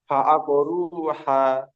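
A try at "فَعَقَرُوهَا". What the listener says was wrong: হা। হা এই জায়গা নয়, আপনার যে জায়গা থেকে হা উচ্চারণ করছেন ওর আরেকটু ভিতরের দিক যাবে, ভিতর থেকে একটা গম্ভীর আওয়াজ ভিতর থেকে বার করে না, ওই রকম ভাবে ফাআকরুহা।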